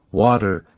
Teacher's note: The t between two vowels often sounds like a quick d.